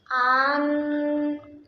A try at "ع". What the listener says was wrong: ये हमजा है। आइन है तो आइन का आवाज निकाले ना। आन जोर से।